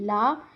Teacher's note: हिंदी में आपका एक ही वर्ण जो है वो पार्श्विक व्यंजन है। जैसे कि ल।